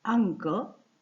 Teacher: यहां देखिए के वी आने के कारण मतलब आने के कारण अनुस्वार की जगह का वर्ग का ही पर सवर्ण अनुनासिक आदेश अर्थात पंचम वर्ण हो गया है